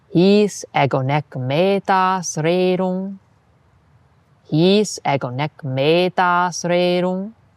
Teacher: Listen for the dactyl at the beginning and then a series of spondees.